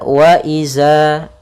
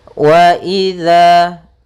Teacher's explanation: Pada bacaan wa idza, pada lafal huruf dzal di sini hati-hati jangan sampai membacanya dengan huruf zai. Karena di sini bukan huruf zai, akan tetapi dia huruf dzal. · Makhraj daripada huruf dzal yaitu ujung lidah kita. Ujung lidah menempel dengan gigi sari atas.